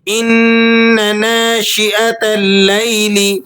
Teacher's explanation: ان غنہ ادا کرنا ہے آپ نے، نون کو 1-2 سیکنڈ کھینچ کر پڑھنا ہے